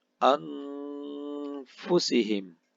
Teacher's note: anfusihim nun sukun bertemu dengan huruf fa. Hukum bacaannya adalah ikhfa, dibaca secara samar-samar atau mendengung.